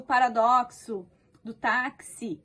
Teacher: O X do paradoxo, do táxi, ele tem este som de X, é do K seguido de S. Então, é uma letrinha só, X, com dois sons, tá? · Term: dífono